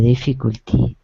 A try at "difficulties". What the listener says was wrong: Okay, so difficulties. Don't try not to swallow the S's.